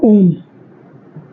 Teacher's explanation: ह्रस्व से 3 गुना समय लगेगा, उससे बोलेंगे प्लुत स्वर